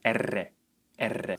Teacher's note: with double R, your tongue should touch the alveolar ridge multiple or many times, which will result in a much stronger or trilled sound R, R. This is called rolled or trilled R.